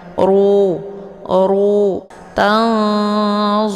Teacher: untuk hukum bacaan ra ini dibaca tebal karena rnya berharakat zumah ya jadi dengan cara posisi ujung lidahnya terangkat ke langit ru